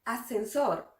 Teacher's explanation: Es el mismo caso de nuestra palabra número 4, ascensor. Cuando hablamos rápido, esta primera S casi no la escuchamos.